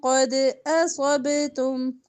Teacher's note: قد دال پر کلکلا ہوگا